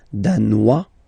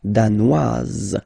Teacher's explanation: Danois, don't pronounce the final S. Danoise, here you pronounce it.